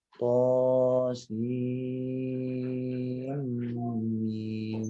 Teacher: Jadi pergantian dari sin ke mim ini harus ada gunnahnya.